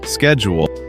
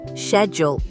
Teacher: In British English, many people say [music] schedule with a sh sound. · In American English, we usually say schedule with a sk sound at the beginning. Schedule. In British English, many people say schedule with a sh sound. Schedule. Although, to make things interesting, you will also hear some British speakers use the American-style sk sound.